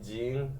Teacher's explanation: And they don't exist in English. It's sort of somewhere between a G, which is kind of a palatal sound in English, and a Z, like a DZ sound, which is more made at the teeth or at the alveolar ridge. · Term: apico-alveolar affricate